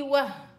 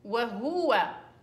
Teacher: وهو يا عمي وهو، ما فيش وهو، الهاء مضمومة، ليش بتقولي وه؟ مدام قلتي وه يعني معناته هذه ساكنة، وهنا انت شايفاها ايش؟